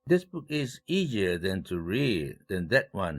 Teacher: this와 that가 각각 일강세를 가져갔다는 사실입니다. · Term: 대조강세